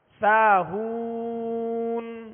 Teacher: تو عن صلاتہم ساہون، ساہون، نون کو کامل ادا کرنا ہے، اس کا سکون، آواز اس میں ہلے نہیں. ساہون، اس طرح آواز ہلے گی نہیں، آواز میں جنبش نہیں ہوگی، آواز لوٹتی ہی نہیں آئے گی، بلکہ سکون کو کامل ادا کرنا ہے.